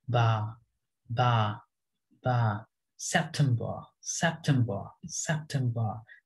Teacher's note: ba যখন হবে একদম flat থাকবে কথাটা একদমই flat, সোজা চলে যাবে